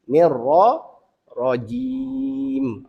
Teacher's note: nir yang pertama kita nipis, ra yang kedua kita kena baca tebal. Tafkhim. Nir ra rajim.